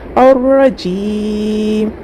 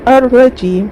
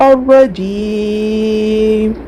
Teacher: ایک الف کھینچ کے یا دو الف کھینچ کے یا تین الف کی مقدار کھینچتے ہوئے پڑھیں گے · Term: مد عارض